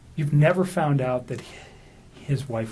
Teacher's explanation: we note a prolonging of the possessive pronoun his